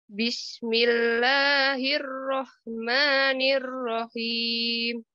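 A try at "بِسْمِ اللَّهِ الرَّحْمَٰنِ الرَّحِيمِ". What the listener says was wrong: Nah, nanti Ibu tebalkan ya. Nirro, coba Ibu nirro.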